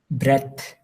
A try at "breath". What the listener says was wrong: I didn't hear the TH at the end, so let's try it one more. Breath.